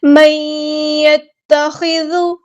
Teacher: مَن يَتَّخِذُ مِن دُونِ اللَّهِ، من يتخذ، نون کے بعد دیکھیں یہاں پہ یا ہے، نون ساکن کے بعد یا ہے، تو یہاں پر ہو رہا ہے ادغام مع الغنہ، ادغام کرتے ہوئے غنہ کرنا ہے ایک الف کے برابر یعنی 2 حرکات، 2 کاؤنٹس رکنا ہے۔